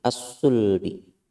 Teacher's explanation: Selanjutnya bertemu dengan shad. Ini hukumnya idgham samsiyah. Idgham samsiyah atau alif lam samsiyah. Lamnya tidak dibaca.